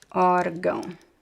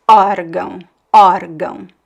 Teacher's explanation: the stress is actually in the first syllable, and the second syllable is the secondary stress, órgão, órgão.